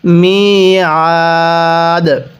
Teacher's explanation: ওয়াকফের সময় দালের উপর জবরকে বাদ দিয়ে পড়ব।